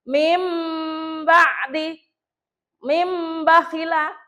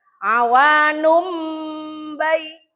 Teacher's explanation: nek mim nun sukun ketemu ba, itu engko mingkem rada suwe ya